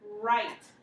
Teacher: So you'll hear the R, but not the W.